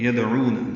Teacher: یدعون دال ساکن پہ قلقلہ ہے، عو واو مدہ ہے.